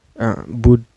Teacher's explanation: Yang asalnya dal di sini berbaris domah karena waqaf atau karena berhenti, maka ini disukunkan ya. Cara bacanya dipantulkan dan pantulannya besar ya. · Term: qalqalah kubro